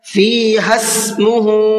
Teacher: ہا کو ڈائریکٹ سین کے ساتھ میں ملائیں گے اس لیے کہ سین سے پہلے جو دونوں الف بنے ہوئے ہیں ان دونوں الف کے اوپر کوئی بھی حرکت نہیں ہے۔